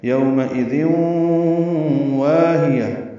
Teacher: ذال نرمی سے ادا ہوگا اور واو سے ملانا ہے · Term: ادغام ناقص